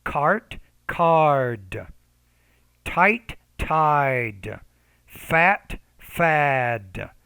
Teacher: When the D's at the end, the vowel before is a little bit longer.